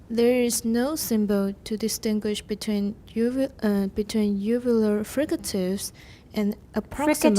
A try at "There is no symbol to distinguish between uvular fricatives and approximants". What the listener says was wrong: Fricatives. Don't go down too low because we're comparing.